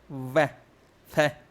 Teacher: दंतोष्ठ है, निचले होठों से और ऊपर के दांतों से